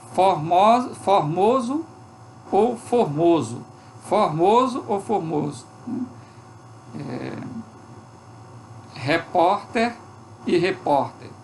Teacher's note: As vogais médias abertas e fechadas se neutralizam, ou seja, elas perdem o caráter distintivo, podendo ocorrer uma ou outra sem alteração da forma linguística, ou seja, do fonema.